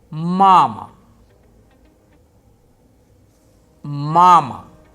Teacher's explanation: unstressed A is pronounced for a shorter duration